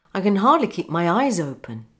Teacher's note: So the S becomes a Z because it's linking to a vowel.